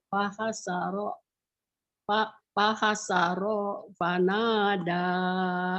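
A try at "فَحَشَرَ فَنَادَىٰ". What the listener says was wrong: Dari ro segera ke pa, shinnya digedein Bu. Fahasyara, fahasyara fanada, fahasyara fanada. Ibu sudah tinggal teknik nyambungnya aja nih. Cuman itu tadi, ya menyambung. Pendek-pendek ibu masih bingung. Fahasyara fanada.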